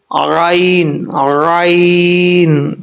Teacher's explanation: اب عین کا یہ جو گلے کا درمیان ہے، ٹھیک ہے، اس کو وسط حلق بولا جاتا ہے، یعنی گلے کی جو بیچ والی جگہ ہے نا، وہاں سے یہ عین پڑھا جاتا ہے